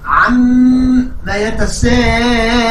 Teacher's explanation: الميم أيضا مشددة فلا بد أن أغنها بمقدار حركتين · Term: الغنة